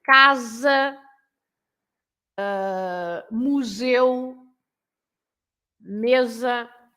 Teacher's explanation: So whenever you have two vowels, you pronounce Z.